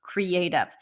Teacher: And then the last syllable is unstressed, probably usually reduced to a schwa.